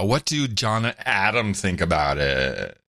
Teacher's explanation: you got the vocal fry in there